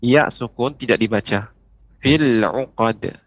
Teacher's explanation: Kalau berhenti pada kata fi, maka dibaca panjang fi. Tapi ketika disambung, maka ya sukun tidak dibaca.